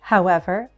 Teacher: a fall rise can also happen on an introductory word